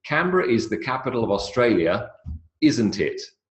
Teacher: And down goes the intonation. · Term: Downward intonation